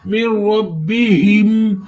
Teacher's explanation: اگر را کے نیچے زیر ہوگی تو اس کو بریک پڑھیں گے. اب را کے اوپر زبر ہے تو اس کو موٹا پڑھیں گے